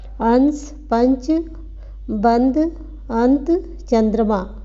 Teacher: उच्चारण में जो हवा है वो नाक से अधिक निकलती है और मुख से कम निकलती है।